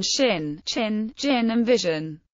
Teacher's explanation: With a convex, V-shaped tongue, and highly palatalized. Palato-alveolar. With a domed tongue.